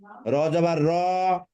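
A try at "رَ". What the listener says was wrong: র জবর র টান দিচ্ছেন কেন? র জবর র।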